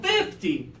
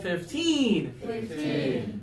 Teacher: the bigger number has the stress on the early syllable 50 and the lower number has the stress on the later syllable 15